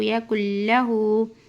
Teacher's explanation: کاف کو ڈائریکٹ لام میں ملانا ہے